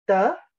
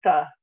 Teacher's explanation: the difference between a dental stop made behind the teeth like duh and a retroflex stop where the tongue is actually curled backwards a little bit